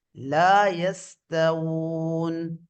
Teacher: உதட்ட வாவ் உச்சரிக்கும் போது உதடு குவிந்த நிலையில காணப்படும்.